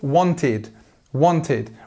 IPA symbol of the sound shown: ɪd